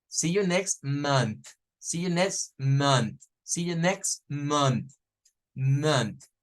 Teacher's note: Man, man. Y luego, después de la N, se agrega la TH sin vibración, o sea, la que es solo.